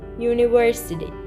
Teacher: Actually, it starts with U, but in pronunciation, it starts with ye.